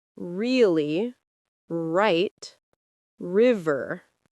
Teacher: R needs a relaxed tongue. Right. You don't push the tongue forward, you keep it slightly back. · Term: R sound